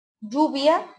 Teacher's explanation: el yeísmo, que consiste en pronunciar el sonido elle como Y. Es decir, se dice lluvia en lugar de lluvia.